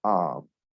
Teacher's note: either followed by l or r especially those are consonants uh it's gonna be pronounced like ah a prolonged